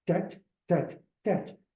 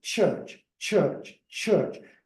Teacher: you need to have the fricative sound following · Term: fricative component